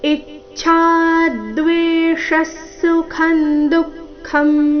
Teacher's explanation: ಇಚ್ಛಾ ಈ ಮೇಲೆ ಆಘಾತ ಛ ಮಹಾಪ್ರಾಣ ದೀರ್ಘ ಹೇಳಿದ ನಂತರ ಅದರ ಮೇಲೆ ಸಹ ಆಘಾತ ಬರಬೇಕು